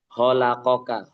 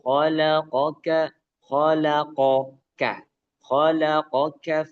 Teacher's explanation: Nah, kemudian panjangnya dua harakat. Khalaqoka itu huruf ko yang keluar dari tenggorokan tengah, Ibu. Bukan ho bukan holaqoka, ho ya kayak ha tapi dibikin o jadi ho gitu ya.